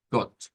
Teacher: con una o corta esa o como recortada verdad no completa